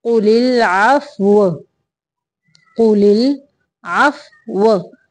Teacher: वाव की शेप देनी है यानी दोनों होंठों को गोल करना है ताकि वाव की अदायगी हो जाए